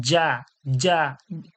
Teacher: জি, এরপর দেখুন জা জবর জা, জা জবর জা, আর জিম জবর যা, জিবের মাঝখান থেকে এটা চেপে, আর এটা জিহ্বার আগা, দাঁতের আগা, জা, জা, জা, আর এটা হচ্ছে যা, জিবের মাঝখান, ওর সরাসরি তালু থেকে চেপে যা, যা, জিম জবর যা, আর এটা জা জবর যা, দুটোর পার্থক্য খেয়াল রাখতে হবে, আর আমাদের এটা প্র্যাকটিসও করতে হবে।